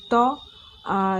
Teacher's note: यह ट वर्ण जो है मूर्धन्य है